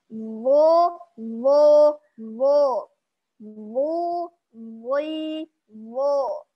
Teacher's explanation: huruf wo ini berbeda makhrajnya dengan huruf po, yakni di ujung lidah keluar bertemu dengan ujung gigi seri atas. Jadi ujung lidah keluar bertemu dengan ujung gigi seri atas.